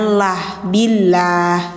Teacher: Ada yang ditipiskan atau tarkik ada yang ditebalkan. Jadi kalau lafaz Allah yang ditipiskan didahuluinya kasrah bunyinya lah billah gitu